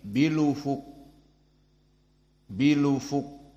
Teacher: Maka lam di sini menjadi berharokat dhammah bil ufuq, dan hamzah dihilangkan. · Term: an-naql